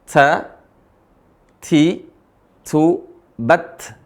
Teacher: tempat keluarnya huruf ta dan th ini sama yaitu ujung lisan ketemu gusi gigi seri atas gusinya